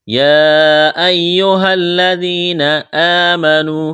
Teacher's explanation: کڑا زبر ایک الف کے برابر کھینچنا ہے، واو مدہ ہے، الف کے برابر کھینچنا ہے